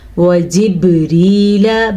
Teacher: با کلکلے کے ساتھ ادا ہوگی، با پہ جب بھی ساکن آئے تو کلکلہ ہوگا